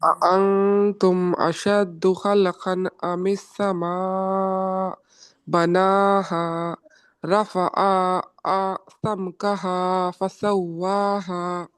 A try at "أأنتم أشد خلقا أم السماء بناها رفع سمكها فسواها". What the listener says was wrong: So there the mistake was in khalqan. So lam khalqan, you said khalaqan. So this is not a qalqala over here. So you will not say khalaqan.